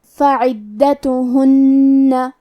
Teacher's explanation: تا اور ہا پہ پیش ہے تو ہمیں یہ دونوں پیش کو برابر سے ادا کرنا ہے. آخری میں حرف النون پہ تشدید ہے تو ہم 2 حرف کے برابر نون کو پڑھیں گے اور غنہ کے ساتھ یہ حرف کو ادا کریں گے · کلمت فعدتهن میں حرف العین کی ادائیگی حلق کے درمیان والے حصے سے ہے. دال پہ تشدید ہے تو ہم 2 حرف کے برابر دال کو پڑھیں گے.